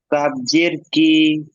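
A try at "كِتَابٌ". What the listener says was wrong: কাফের যে তিন আলিফ টানটা, ওই টানটা দিতে হবে, কাফ জের কি। তা আলিফ যাবার তা, এটা তো আলিফ মাদ্দা, এটা তো টান হবে।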